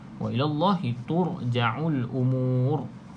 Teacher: Maka kita baca dengan ra tebal, ra tafkhim.